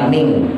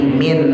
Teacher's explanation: Min ikhfanya condongnya ke en, ikhfanya ikhfa akrob soalnya ta to da ya, condongnya ke en, bukan ang, bukan ming, tapi min.